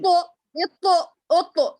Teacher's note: چھٹکا ہمیں فیل جی ہوتا، ہوا بھی جی باہر نکلتی، مگر وہی ایک چیلنجنگ ہے کہ ہمیں وہ پروناؤنس کرتے ہوئے اس کو اندر بند کرنا ہے، وائس کو سٹاپ کر لینا ہے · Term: خلخلہ